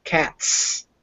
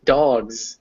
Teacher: s is the voiceless sound and z is the voiced sound